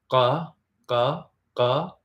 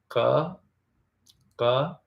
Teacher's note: I think it's represented by a Q, and I think it's like ka, ka, ka. It's like a k, but like deeper in your throat.